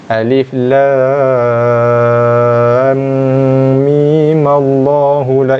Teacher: bacaan wasal, tapi mi tu dibaca dengan 2 harakat sahaja sebagaimana asli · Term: wajah yang ketiga